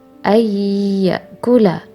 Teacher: nun mati bertemu dengan huruf ya, maka dari itu didengungkan terlebih dahulu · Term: idgham bi gunnah